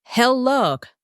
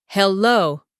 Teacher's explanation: >> Now, the pronunciation is important here. It's hello with the stress on the second syllable, not hello.